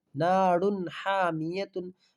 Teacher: را کے اوپر دو پیش کی تنوین ہے، دو پیش کی تنوین کے بعد حروف حلقی کے 6 حرفوں میں سے ہا آیا ہے، اس لیے اس کو یعنی دو پیش کی تنوین کو ظاہر کر کے بلا گنہ کے جلد پڑھیں گے، اس کو اظہار کہتے ہیں